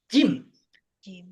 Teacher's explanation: Sementara ja huruf aslinya jim itu ada di tengah lisan bertemu dengan langit-langit.